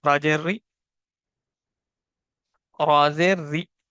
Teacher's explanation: را کو کیوں پتلا پڑھیں گے کیونکہ اس کے نیچے زیر ہے